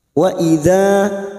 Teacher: fathah bertemu alif 2 harokat kita panjangkan